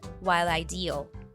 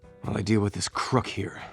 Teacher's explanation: the l sound from the word while is linked to I and deal so all three words are pronounced together